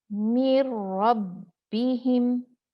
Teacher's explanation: नून मुदगम हो गया रा में, और बगैर गुन्ना के नून एकदम गायब हो गया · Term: इदगाम कामिल बगैर गुन्ना